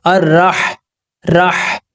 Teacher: یہ جو ہا ہے یہ حلق کے درمیانی حصے سے ادا ہوتا ہے